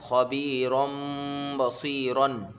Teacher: رن نہیں پڑھیں گے، رم پڑھیں گے، میم سے ملا کے حرف با آ رہا ہے تنوین کے بعد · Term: اقلاب